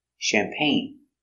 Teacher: Accent goes up at the end.